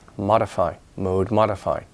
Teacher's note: mode is long O, mode, but it becomes short in modify